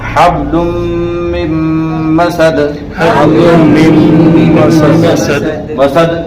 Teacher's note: حبل من مسد، مسد دال آیا یہ، یعنی اس پہ رکیں گے تو آواز لوٹے گی، اس کو قلقلہ کہتے ہیں